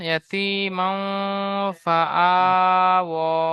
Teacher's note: খাড়া জাবারকে এক আলিফ পরিমাণ টান দিয়ে পড়তে হবে।